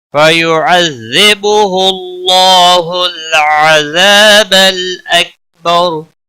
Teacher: اکبر وقف کی صورت میں را ساکن پڑھا جائے گا اور موٹا بھی پڑھا جائے گا کیونکہ را ساکن سے پہلے زبر ہے.